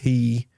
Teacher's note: when we say the word p there's a burst of air that is released from our mouth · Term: plosives